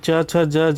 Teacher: च, छ, ज, झ जो है स्पर्श संघर्षी व्यंजन कहलाता है